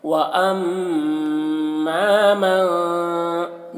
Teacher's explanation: میم مشدد ہے تو غنہ کے ساتھ میں پڑھنا ہے اور تھوڑا کھینچنا بھی ہے الف کو